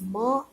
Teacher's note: Ma is produced with the help of upper lip and also lower lip.